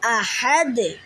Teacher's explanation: হা কণ্ঠনালীর মধ্যখান থেকে উচ্চারিত হবে।